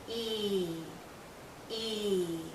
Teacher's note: our lips are very spread very pulled out and this is a long vowel sound so think of your lips being pulled out like the vowel · High our mouth is closed again our lips are pulled and there's a lot of tension in this vowel sound tension means tight you feel it here in your cheeks and a little